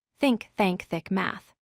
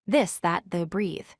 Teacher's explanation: the voiceless sound is sharper and more forceful, while the voice sound is softer and has more vibration in your throat.